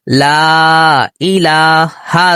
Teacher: اس کے بعد حمزہ دوسرے کلمے میں ہے لہذا یہ مد منفصل ہے, اس کو 2 سیکنڈ کے برابر ہم نے کھینچنا ہے